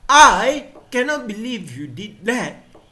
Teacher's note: so i want to stress on the word i